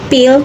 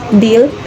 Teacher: The difference is in voicing. P is voiceless while B is voiced. Both are bilabial plosives produced by closing both lips and then releasing a burst of air.